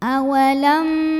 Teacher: Cara membacanya adalah didengungkan. Jadi bunyi M-nya tahan sampai ada getaran halus ke hidung. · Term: gunnah musyaddadah